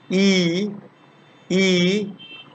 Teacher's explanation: we are saying it in a relatively close and unrounded position it's pronounced in the front part of the vocal tract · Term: long vowel